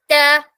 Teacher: ട എന്ന് പറയുമ്പോൾ ഈ മുകളിലെ പല്ലിന്റെ റൂട്ട് ലൈനിൽ റൂട്ടിൽ അഥവാ ഗം ലൈനിൽ നല്ലോണം പ്രസ്സ് ചെയ്തിട്ടാണ് പറയുക